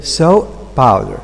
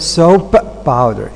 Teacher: it's not easy so to make sequence easier and more natural it's better to change the first stop into a glottal stop